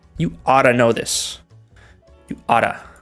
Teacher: Y cuando lo decimos, ought to, se combina y suena como oughta.